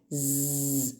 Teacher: vocal cords vibrate. So we call it as voiced.